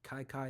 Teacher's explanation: Chinese is a tonal language. Kai Kai is the first tone.